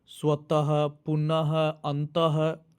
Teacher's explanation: इसको विसर्ग बोलते हैं। और विसर्ग का उच्चारण जो है ह की तरह किया जाता है।